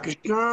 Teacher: కృష్ణ దీర్ఘం కాదు, దీర్ఘం కంటే ఒక ప్లుతం అంటే మూడవ మాత్ర కూడా ఎక్కువ ఉంది